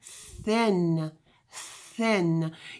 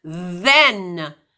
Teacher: Again, put your fingers on your throat and say the word thin, thin. You can't hear your voice vibrating. But if you say the word then, you can hear it vibrate. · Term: voiced TH